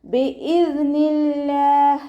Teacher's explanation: ലാമിൻ്റെ കൂടെ അലിഫ് മദ്ദും വന്നിട്ടുണ്ട്. 2 കൗണ്ട് മാത്രം നീട്ടിക്കൊടുക്കുക കേട്ടോ.